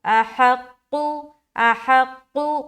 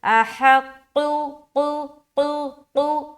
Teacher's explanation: قاف کو موٹا ادا کریں گے، ہا کو حلق سے